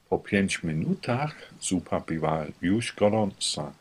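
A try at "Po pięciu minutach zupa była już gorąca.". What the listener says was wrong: A tu zabrakło jednej literki. U, po 5 minutach. Po 5 minutach.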